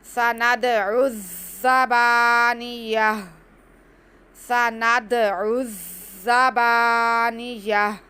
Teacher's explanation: दाल साकिन, दाल पे कलकला होगा। उसके बाद आइन को हमने ज़ा से मिलाना है, ज़ा हमने सिटी के साथ अदा करना है। थोड़ा सा रुक के पढ़ेंगे क्योंकि ज़ा पे शद है।